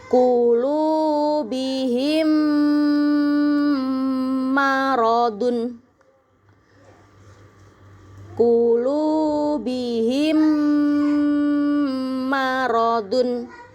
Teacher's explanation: Hukum yang kedua ada idgham mimi. Kalau mim sukun ketemu sama huruf mim. Ya, cara membacanya sama. Harus ditahan dengung yang lama.